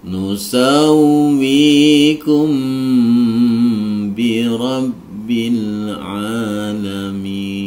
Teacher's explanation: Disamarkan memnya kemudian dimasukkan disertai dengan dengung. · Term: ikhfa safawi